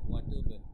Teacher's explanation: ওয়াতুব বায়ের উপরে যজম আছে, তাই কলকলা হবে